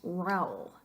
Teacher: You got a, vocal fuerte, u, vocal débil. But if it really is a diphthong, it stays together in one syllable, making that name one syllable